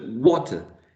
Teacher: And the second syllable is a schwa